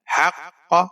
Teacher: وَلَا تَلْبِسُوا الْحَقَّ، ہا کے اوپر زبر ہے، قاف مشدد ہے، ہا کو قاف کے ساتھ ملانا ہے، قاف کو آپ نے موٹا پڑھنا ہے۔ حق بغیر کھینچے پڑھیں گے۔